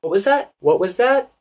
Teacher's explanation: notice the rising intonation what was that what was that it goes up